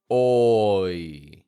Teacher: Combine those two sounds, making the O strong and the yee fading, oi. And you will have a crystal clear diphthong sound. · We looked at the mouth movements that are necessary to produce this. First, you round your lips like oh. Then you pull your jaw up and you relax your lips like yee. Combine those two sounds, making the O strong and the yee fading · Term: oi sound